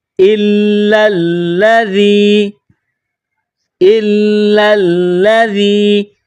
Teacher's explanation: ذال، ذال کو نرم پڑھیں گے، زبان تھوڑی سی باہر نکالیں گے ذال کو پڑھتے وقت